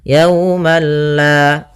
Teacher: di sini Ma maka yaumalla tapi perlu diingat bila gunah berarti tidak disertai dengan gunah sehingga langsung saja tidak boleh ditahan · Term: idgham